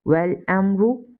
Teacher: After meme sakina here is ra and here is izhar shafwi, we will read without gunna.